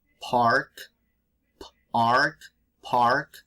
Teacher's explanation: the p in english is explosive so it's it's a little bit different from spanish